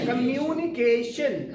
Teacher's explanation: यू का यू बनाना और एशियन वाले पार्ट पे ज्यादा स्ट्रेस देना